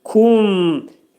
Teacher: Mim hərfini dedikdə ağız yumulur və mim hərfini izhar edirik.